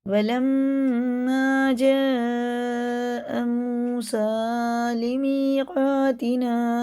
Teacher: یہ مد متصل ہے، 4 الف کے برابر کھینچ کے پڑھنا ہوتا ہے کیونکہ اس کے بعد حمزہ آ رہا ہے